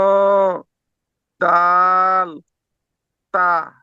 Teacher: সামনের উপরের দুই দাঁতের গোড়ার সঙ্গে লাগিয়ে উচ্চারিত হয়